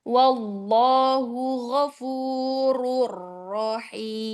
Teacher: lafzul jalalahnya mau lebih bulat lagi